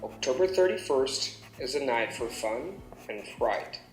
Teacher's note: I'm going up for fun because I haven't finished yet so my tone goes up and then the sentence falls on fright because I have concluded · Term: intonation going up